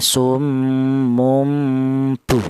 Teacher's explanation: non mati itu berjumpa dengan huruf ba, maka cara bacanya non yang dari tanwin tadi itu diganti dengan huruf mim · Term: iklab